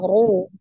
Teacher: Kemudian yang kedua ro-nya berharokat domah. Ro domah itu juga dibaca dengan tebal.